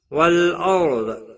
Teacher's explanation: را ساکن سے پہلے زبر ہے، اس لیے را ساکن پر پڑا جائے گا